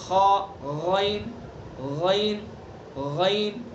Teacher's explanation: غین کا مخرج ادنی حلق یعنی حلق کا منہ کی طرف والا حصہ، حلق سے آگے کو آ جائیں گے.